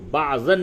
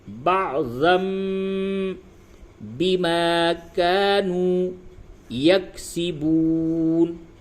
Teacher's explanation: تو یہاں پہ قلب ہوگا تو ضاد دو زبر زن ہوتا ہے، لیکن یہاں پہ پڑھیں گے ضم، بعضم، یعنی ضاد دو زبر زن کی جو آواز تھی اس کو میم سے بدل دیں گے۔ تو بعضن نہ پڑھ کے آپ کو پڑھنا ہے بعضم بما كانوا یکسبون۔